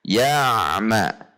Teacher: Antara a dengan ma tidak terjeda.